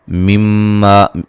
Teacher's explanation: मीम मुशद्दद पे गुन्ना ज़रूरी है। मा अलिफ मद्दा है।